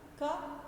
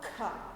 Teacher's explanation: क अब ही देखिए, खा कहते समय ज़्यादा सांस नहीं छोड़ते, खा कहते समय जो सांस है वो हमें हाथ पर लगता है · का उच्चारण करते समय हमें जोर से ज़्यादा प्राण का उपयोग नहीं कर सकते हैं, ज़्यादा सांस नहीं ले सकते हैं, आराम से हम उच्चारण करते हैं। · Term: महाप्राण, अल्प प्राण